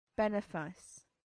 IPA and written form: ˈbɛnɪfɪs (benefice)